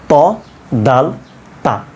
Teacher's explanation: জিহ্বার আগাটা ওপরের দাঁতের গোড়ার সঙ্গে লাগিয়ে দিবেন